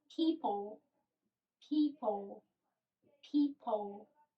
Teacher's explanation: it ends in l very similarly to spanish but your tongue is a bit closer to your teeth